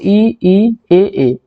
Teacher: जीभ के अगले वाले हिस्से से बोले जाते हैं